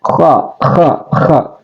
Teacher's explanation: Kha adalah adanil halki, ya, adanil halki atau ujung tenggorokan. Kha. Jadi dia hampir sama dengan aksal lisan, hampir ketemu dengan aksal lisan karena masing-masing berdempetan.